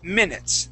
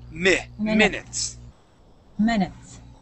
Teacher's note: instead of saying minutes and using the Spanish I sound, okay, we're going to use what's called the short I sound